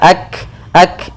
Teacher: punya sifat hams yaitu mengalirnya udara atau mengalirnya nafas kita ak ak sedikit saja ak taa kemudian di sini jangan sampai